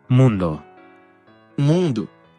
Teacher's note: la O final del portugués se ha reducido dando un sonido de U